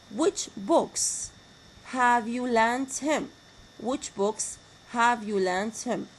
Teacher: Like in big WH question, I have falling intonation.